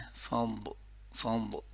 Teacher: فض زبان کا سائڈ والا حصہ سائڈ والے دانتوں کے ساتھ